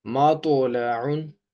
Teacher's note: تو توا کی آواز موٹی اور جھٹکے والی ہوتی ہے